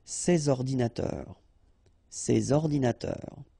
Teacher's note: So you should make the liaison between S and O